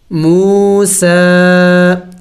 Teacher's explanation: میم واو پیش مو، سین کڑی زبر سا، موسا، سین کے اوپر کڑی زبر ہے چونکہ ایک الف کے مقدار لمبا کیا جاتا ہے اور چھوٹی مد بھی ہے تو تھوڑا سا اور بھی زیادہ لمبا کریں گے